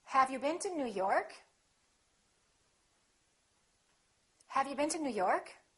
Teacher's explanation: For yes-no questions, we use a rising intonation.